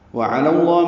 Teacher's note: عین وسط حلق سے ادا ہوگا